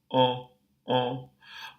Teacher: for the dark nasal the lips should be protruded just a bit. And for that reason, it's actually closer to an O vowel, a nasalized O, O, O.